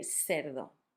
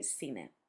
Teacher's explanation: some countries and some parts of Spain, instead of making the th sound, make an S